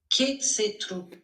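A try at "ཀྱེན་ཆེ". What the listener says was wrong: Kiemche. Alors, Kie Che. Alors, Kie Che Truk et Kie Che, ça donne Kiemche. Il y a un léger M qui se glisse entre Kie et Che. Kiemche.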